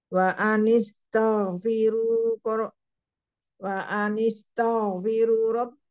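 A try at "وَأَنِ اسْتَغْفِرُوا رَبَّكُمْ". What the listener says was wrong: Tidak ada wawunya. Tidak ada. Tapi langsung.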